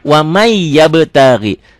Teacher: Tulisannya waman, dilatenkannya ya waman yabtagi. Dibacanya wamai. Ya, N-nya berlebur jadi Y. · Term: idgham bigunnah, idgham